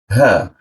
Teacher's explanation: ha posisinya ditenggorokan bagian bawah